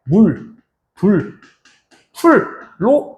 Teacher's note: 여기에 있는 미음과 비읍, 피읍은 입술에서 나는 소리라고 해서 순음, 입술 소리라고 이야기를 합니다.